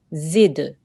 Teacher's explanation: Just try to make a slight jerking on the dal. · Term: qalqala sound